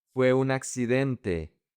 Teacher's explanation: The N connects to the A.